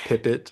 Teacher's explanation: Pipit, P's and T's are plosives, and then killdeer, K and D are also plosives.